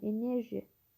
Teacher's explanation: Enerji sözünə vurğu ikinci hecadadır.